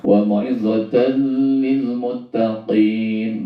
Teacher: masuk tanwinnya ke dalam huruf lam, tetapi tanwinnya tidak dibaca dengung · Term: idgham bila gunnah